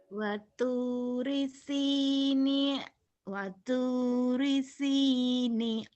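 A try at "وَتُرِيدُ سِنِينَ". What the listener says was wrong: waturi sinin. Kan jadi N ujungnya.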